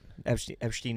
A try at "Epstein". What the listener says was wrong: Did you have an H there? Where'd that H come from?